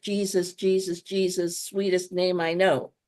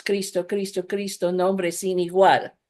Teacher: each of them is a two-syllable word with this stress on the first syllable